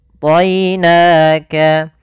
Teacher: Maka di sini kita baca dengan bacaan lin, yaitu lembut dalam pelafalannya dan tidak boleh ditebalkan. Ya-nya harus tipis. · to-nya tebal, ya-nya tipis